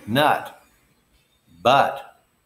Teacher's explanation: The short U is just formed by the schwa sound. Nut, but. Just open your mouth. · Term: short U sound